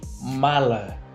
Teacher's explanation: Notamos que a sílaba Ma, foi pronunciada mais fortemente que a sílaba lá. Por isso dizemos que ela é a sílaba tônica.